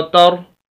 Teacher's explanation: रा को मोटा पढ़ेंगे, चाहे रा के ऊपर ज़बर हो या पेश हो तो रा मोटा पढ़ा जाता है। और अगर रा खुद साकिन है जैसे यहाँ पर है तो पिछले लफ्ज़ के ऊपर भी ऐसे ही है, अगर ज़बर और पेश है तो रा मोटा पढ़ा जाएगा, और अगर ज़ेर हो तो फिर रा बारीक पढ़ा जाएगा।